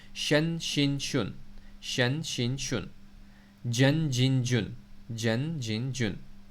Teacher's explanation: یہ زبان کے بیچ والی جگہ کے جو لیٹرز ہیں وہ آ گئے، یا شین اور جیم